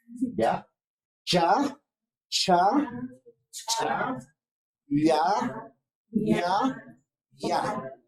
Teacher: Todos esos sonidos corresponden desde el punto de articulación de los palatales.